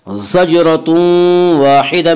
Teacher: یہاں تنوین کے بعد یومنو کے 4 حرفوں میں سے واو ہے، اس لیے یہاں پہ ادغام بالغنہ ہوگا۔ زجرۃ واحدہ، الف مدہ، الف ہمیشہ مدہ ہوتا ہے، الف سے پہلے زبر ہوتا ہے، الف مدہ کو ایک الف کے برابر کھینچ کر پڑھیں گے۔